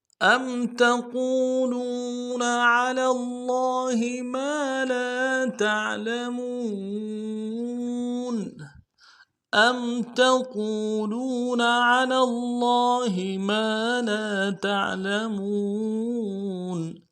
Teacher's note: ام میں حمزہ کو میم ساکن کے ساتھ ملانا ہے، میم ساکن میں غنہ ہوگا